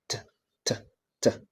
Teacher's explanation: which is voiceless. The point of articulation is alveolar. The manner of articulation is plosive,